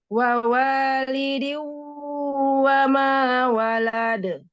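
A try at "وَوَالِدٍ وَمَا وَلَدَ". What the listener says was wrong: Walade, langsung. Di-nya kasrohnya jelaskan dulu ya. Wa walidiu, lidiu, wa ma walad. Jadi di langsung masuk ke waw ya, langsung idgham. Idgham bi gunnah, tanwin ketemu waw, idgham bi gunnah.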